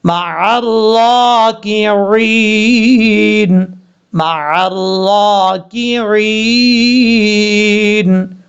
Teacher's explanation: وقف کریں گے تو نون ساکن ہو جائے گا